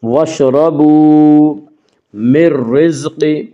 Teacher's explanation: اس کا قاعدہ یہ ہے کہ نون ساکن یا تنوین کے بعد اگر حروف یرملون میں سے کوئی حرف آئے تو ادغام ہوگا، لام اور را میں ادغام بلا غنہ ہوگا